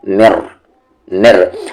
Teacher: نون کی آواز بالکل بھی نہیں آنی چاہیے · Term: ادغام بلا غنہ